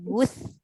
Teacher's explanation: Wuth tu hujung lidah keluarkan.